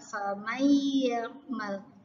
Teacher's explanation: Nah, ini ada nun mati bertemu ya, maka harus dibaca idgham biguna. Harus didengung 2 harokat